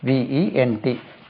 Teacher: Stress lies on the second syllable.